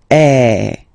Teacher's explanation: So it's really open. I mean, the sound is really open, and normally your mouth should be opened a little bit more than with the accent aigu as well